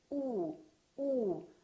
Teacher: for the ooh sound the lips are rounded